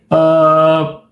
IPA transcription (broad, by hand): ə